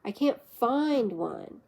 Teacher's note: Falling tone on find.